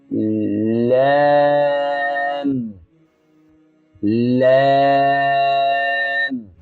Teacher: এটি ৮ নম্বর মাখরাজ, জিহ্বার অগ্রভাগ, সামনের দাঁতের গোড়ায় লাগিয়ে উচ্চারণ করতে হবে। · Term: লাম